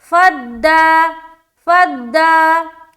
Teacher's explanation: تو فا کو دال سے ملایا فد، دال قلقلہ والا حرف ہے نا تو ملا رہے فد، آواز لوٹتی ہوئی معلوم ہوگی. فد، دا، دال کھڑا زبر دا، پھر یہاں پر کھینچیں گے ایک الف کی مقدار کے باقدر